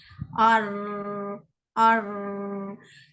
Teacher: Ra yang tebal ni, kita tolak sahaja lidah kita ke makhraj dia. Mana makhraj huruf ra? Hujung lidah bertemu dengan langit. Gusi atas ni kan.